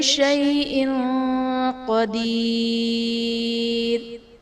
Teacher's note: کل شیء میں شیء میں یا ساکن سے پہلے حرف پر زبر ہے، یا لین کا قاعدہ، اور حمزہ کے نیچے دو زیر کی تنوین، تنوین کے بعد حروف اخفا میں سے قاف ہے تو یہاں پر اخفا کا قاعدہ ہوگا، یعنی تنوین میں ہم غنہ کر کے پڑھیں گے